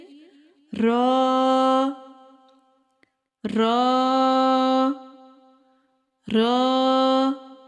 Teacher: र को अदा करते वक्त जुबान को तालू के साथ जोड़ने से र को पुर पढ़ा जाता है